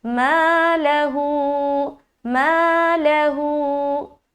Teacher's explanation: تو ما میں کھینچیں گے ایک الف اور ہو میں کھینچیں گے ایک الف. لام بیچ میں جو آ رہا ہے فتحہ یعنی کہ زبر کے ساتھ, اس کو ہم جلد ادا کریں گے.